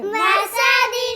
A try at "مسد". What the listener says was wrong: وقف میں کیا بن گیا؟ اس نے کیا غلطی کی ہے؟ ہاں سین کی سیٹی ادا نہیں کی بھائی.